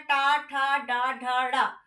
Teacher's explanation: जब जीभ जो है वो आपके कठोर तालु को छूकर उच्चारण हो। वो हमारा होता है मूर्धन्य।